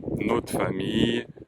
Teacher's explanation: on ne dit pas le R, en l'occurrence, donc on ne prononce pas ce R.